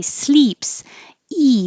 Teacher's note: if you say sleeps e the tongue will be really high